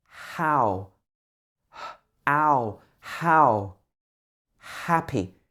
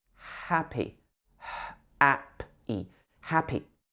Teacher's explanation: It's literally just breath. It's not made in your throat, and it's not made in your mouth. It's just air, pushing air through here, just like you're breathing on a mirror.